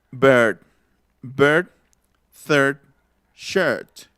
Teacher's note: Es como una E, pero más cerrada.